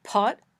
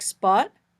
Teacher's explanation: The puffy sound in words like pot, the less puffy sound in words like spot